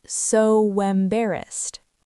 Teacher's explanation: Embarrassed starts with an E. We add an invisible W. It becomes so embarrassed.